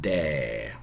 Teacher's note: Middle English, a diphthong, but in Shakespeare, monophthongized.